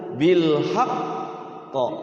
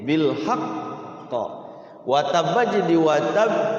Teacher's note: jadi cara baca qqala bertasid itu dia harus ditahan dulu